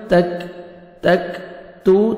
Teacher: جلدی پڑھیں گے، وما کنتم تکتمون، تا کو باریک پڑھیں گے، تا کاف کو بھی باریک پڑھیں گے اور کاف کا لائٹ سے ساؤنڈ آئے گا